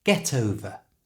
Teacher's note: get ends in a consonant sound that's a t sound and the second word over starts with a vowel sound we're going to move that t sound from get to the front of the o over so get over becomes get over get